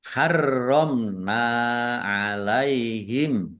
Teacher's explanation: Roknya dibaca double, ada tasdidnya. Ditekan biar tampak doublenya. · Mim sukun bertemu dengan huruf nun, bacaan idhar safawi, dibaca jelas.